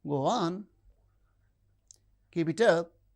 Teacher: The low rise in statements is encouraging.